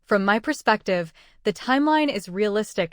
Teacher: From my perspective should move as one connected chunk with stress on perspective.